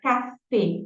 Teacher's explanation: Café en français é fechadinho